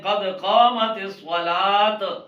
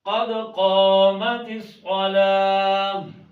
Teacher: تو وہ نہیں دینی چاہیے، بلکہ گول تا وقف میں ہا کی آواز پیدا کرتی ہے